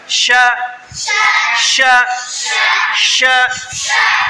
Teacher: ঠোঁট লড়বে না, ঠোঁট গোল হবে না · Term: শিন